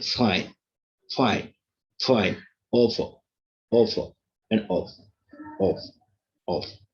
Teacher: This labiodental fa is different from Nepali fa. Nepali fa is bilabial fa, and what this English fa is what?